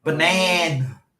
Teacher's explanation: The first A has no sound. It's just it goes from the B to the N with no sound.